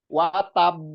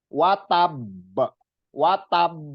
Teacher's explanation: Jadi seolah-olah berhenti terus baru dipantulkan besar gitu. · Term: qalqalah kubro